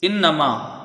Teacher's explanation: حمزہ کو نون سے ملا کے پڑھا جائے گا، نون مشدد ہے، ایک الف کی مقدار غنہ ہوگا